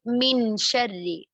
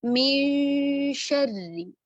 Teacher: इसी मिसाल को अगर हम देखें तो आगे शीन आ रहा है, तो हम क्या करेंगे, नून को हमने छुपाया, गुन्ना किया, पहले हर्फ पर गुन्ना करते हुए हमने गुन्ना किया नून साकिना पर, और शीन के मखरज के करीब ले गए। शीन का मखरज यानी जबान का वस्त ऊपर तालु के वस्त से लगाएंगे, जबान का सेंटर तालु के सेंटर से, फिर इसको हम अदा करेंगे मिन शर्री। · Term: इक्फा